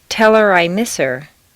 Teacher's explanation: on personal pronouns it's common to drop the H